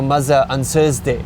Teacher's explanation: it's either a D or an S right because there's no th sound and you just kind of try to use the closest thing